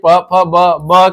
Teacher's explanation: ब आपके ओष्ठ में आ जाएगा